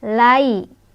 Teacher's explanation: lai harf lin atau huruf lin karena ada ya sukun, sebelumnya ada fathah di lam. Cara bacanya lunak atau lembut.